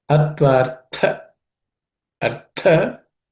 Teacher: this tha is also aspirated, second letter in the third class of consonants.